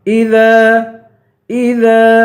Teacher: دال کو ایک الف کی مقدار کھینچ کے پڑھیں گے